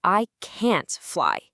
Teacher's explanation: But when you're saying no, the power is in the negation itself. All the force lands right on can't. You stretch it out, you stress it.